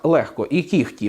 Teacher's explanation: у словах легко і кігті ми вимовляємо х хоча пишемо г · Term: оглушення